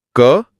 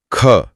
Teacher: इस अंतर को महसूस करने के लिए अगर अपने हाथ को मुंह के एकदम सामने रखा जाए और क बोला जाए तो हाथ पर हवा का बहुत कम दबाव महसूस होगा। लेकिन जैसे ही ख बोला जाता है। मुख से हवा का एक गर्म झोंका तेजी से बाहर आता है। यही महाप्राण है।